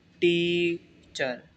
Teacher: टीचर word में जो है ना हम पहले पार्ट पर ज़्यादा जोर देते हैं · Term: स्ट्रेस